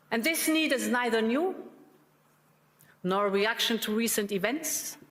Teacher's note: there's two opportunities for a schwa in two and event right? But she's not using either of them